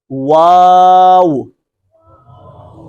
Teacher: اس میں کیا ہے کہ واو ادا کرتے وقت اوپر والے دانت نچلے ہونٹ کے ساتھ لگا دیتے ہیں، حالانکہ اس طرح نہیں ہے۔ عربی کے اندر واو کس طرح ادا ہوگی، دونوں ہونٹوں کو صرف گول کرنا ہے، واو۔ شروع میں بھی ہونٹ گول کریں گے، آخر میں بھی، اس لیے کہ اس کا تلفظ ایسے ہے، واو۔